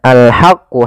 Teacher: ha kecil dibaca dengan ha alirkan nafas